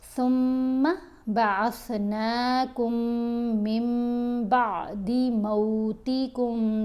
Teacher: نون ساکن یا تنوین کے بعد اگر حرف با آ جائے تو ہم نے نون کی آواز کو میم کی آواز سے بدل کر پڑھنا ہے، تو یہاں ہم نے من نہیں پڑھنا، میم پڑھنا ہے۔